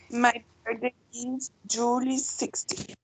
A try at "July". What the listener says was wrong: July. Julie is a dog. Julie.